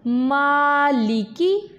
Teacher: मीम को हमने नाक में इसकी आवाज़ को नहीं लेके जाना